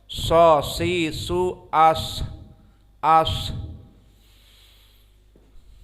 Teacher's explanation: Maka al-hams maknanya adalah jaroyan nafas ma'al harf. Di saat menyebutkan harf ini ada nafas yang masih keluar padahal telah disukunkan. Di dha'fil i'timad alaih, karena dhaifnya makhraj ini.